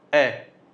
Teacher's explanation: अब सबसे पहले ए जो अर्धविवृत होता है, ए की हम बात करेंगे तो यह अर्धविवृत, यानी कि ए आप बोल के देखो, मुंह आपका आधा ही खुल रहा है, ए। ठीक है, तो यहाँ पे अर्धविवृत हो जाएगा।